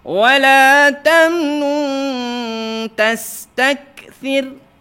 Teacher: Sa lidah kena kurangkan sikit. Jangan tastaksir, nanti dia pergi ke huruf sin. Jangan terpergi ke lain huruf.